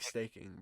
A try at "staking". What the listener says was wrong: Snaking? You said snake.